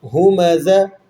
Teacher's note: زا میں سیٹی کی آواز نکلے گی